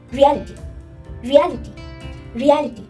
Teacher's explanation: So you can understand that this word has more stress in the second part.